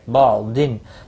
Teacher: تنوین کے بعد حرف ہلکی کا عین ہے، اظہار ہلکی ہوگا، گنہ نہیں ہوگا